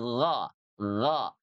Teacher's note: Menebalkan huruf isti'la itu dengan cara mengangkat pangkal lidahnya ya. Jadi kalau ini lidah nih ya, ini lidah, ini bagian tengahnya, ini bagian pangkalnya.